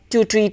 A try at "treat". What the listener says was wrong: And just be careful about treat. Make sure the T sound you pronounce to treat, time, to pronounce that with a little bit more aspiration.